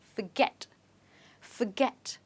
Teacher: Well, the stress in this word is on get.